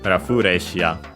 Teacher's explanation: the safest guess is accented just like in English. So on the re in this case